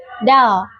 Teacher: Huruf dal makhrajnya itu di ujung lidah yang menempel pada gigi seri atas